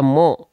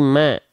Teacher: bukan dibaca mo tapi Ma vokalnya adalah a berarti dia adalah huruf tipis